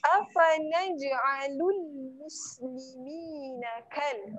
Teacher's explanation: Jangan terlalu menekan di tengah lidah. Kalau kita terlalu tekan, dia akan jadi shin. Yang salah dia, afanaj'alul muslimina kal mujrimin.